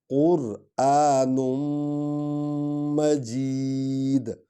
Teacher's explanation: قاف کو پر پڑھیں گے۔ قرآن، نون کو میم میں ملائیں گے کیونکہ میم پر شد ہے۔ قرآن مجید، مجید، مجید، میم حرف شفوی ہے، ہونٹوں سے ادا ہوگا۔